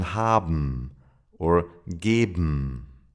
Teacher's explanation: Ben sounds like bm, for example in haben or geben